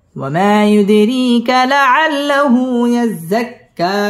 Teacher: ওয়াও ঠোঁট গোল করিয়া, ওয়া মা মধ্যে তবাই 1 আলিফ টেনে পড়তে হবে, ইউদ দাল কলকলার হরফ এখানে ধাক্কা দিয়ে পড়তে হবে